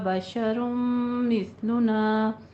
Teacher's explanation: بشر مثلنا میں تنوین کے بعد حروف یمون میں سے آ رہا ہے تو ادغام مع الغنہ یعنی ادغام ناقص